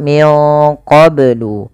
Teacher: melafal qablu ini banyak harus dipantulkan karena ia ada bacaan qalqalah